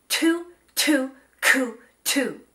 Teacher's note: On each of those, you should feel a burst of air.